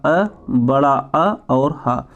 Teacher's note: तो जैसे पहला हो गया कंठ से मतलब किसका और उच्चारण होगा, तो हो गया छोटा अ, बड़ा अ और ह। तो अ, आ और ह इसका उच्चारित स्थान है कंठ